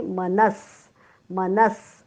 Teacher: विसर्गाचा उच्चार आपण हलंत स करणार आहोत. उच्चार होईल मनस मनस.